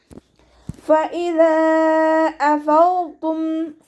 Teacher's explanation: ഫഇദാ അഫൗതും ഫ ലൈറ്റാക്കിയിട്ട് ഉച്ചരിക്കുക. മേലെ മുൻപല്ലിൻ്റെ അറ്റം താഴെ ചുണ്ടിൻ്റെ വെറ്റായ ഭാഗത്ത് വെക്കുക കേട്ടോ. ദാലിൻ്റെ കൂടെ മദ് വന്നിട്ടുണ്ട്.